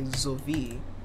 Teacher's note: Despite having an s, it has a z sound at the front. And despite having a w, it has a v sound in the middle.